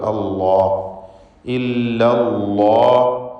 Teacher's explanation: ഇല്ല എന്ന ലാമും അള്ളാഹ് എന്നതിലെ ലാമും രണ്ടും ശബ്ദമുണ്ട്. ആദ്യത്തെ ഇല്ല എന്ന ലാമിൽ തർക്കീഖാണ്, രണ്ടാമത്തെ അള്ളാഹ് എന്ന ലാമിൽ തഫ്ഖീമാണ്. ആ വ്യത്യാസം മാത്രമേ ഉള്ളൂ.